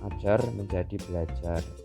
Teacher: Fonem R pada imbuhan ber diubah menjadi L.